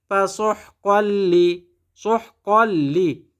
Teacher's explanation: তানবিনের পরে লাম ইদগামে বেলাগুন্না